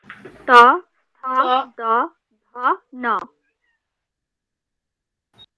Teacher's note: ত বর্গের উচ্চারণ স্থান দন্ত